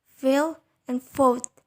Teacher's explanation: In the production of these 2 consonants, the lower lips articulates with the upper teeth, barely touching each other. Both are oral. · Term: Labiodentals